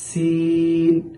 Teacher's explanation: সিনের ক্ষেত্রে অতিরিক্ত একটা আওয়াজ বের হবে, চড়ুই পাখির ন্যায় চিকচিক একটা আওয়াজ বের হবে, সিন। এখানে যেন অনেকেই সিন সিন এরকম শব্দ উচ্চারণ করেন, সেটা যেন না হয় খেয়াল রাখতে হবে।